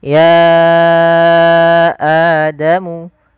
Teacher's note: ya panjangkan dulu ianya sepanjang 4 atau 5 harakat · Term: mad jaiz munfasil